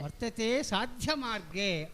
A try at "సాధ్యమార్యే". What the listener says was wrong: ఆర్యే గురువు గారండి, ఆర్యే యకారం, ఆర్యే ఆర్య ఇది ఆర్యేతి జగన్మాత సంబోధనం. ఆర్యే ఆర్యే మాతః. మాతః కిం తే పరమదయయా వర్తతే సాధ్యమార్యే.